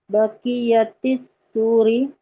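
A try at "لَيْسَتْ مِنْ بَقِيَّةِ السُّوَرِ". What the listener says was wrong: Bukan sur, tapi suar. Kalau sur itu gerbang atau pagar. Suar jamak dari surah. Dari ini aja, laisat min baqiyatis suwari.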